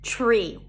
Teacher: Then we have tree, a T sound, an R, and a high E. Tree. When the T appears before an R, it has a ch sound to it.